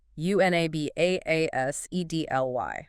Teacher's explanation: Whoa, 5 syllables. Unabashedly, stress on the third syllable.